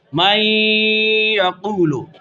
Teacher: نون ساکن ہے اور یا متحرک ہے، نون اور یا دونوں کو ایک ساتھ مشدد ادا کیا گیا تو اس کو مطلقاً ادغام کہتے ہیں۔ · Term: ادغام مع الغنہ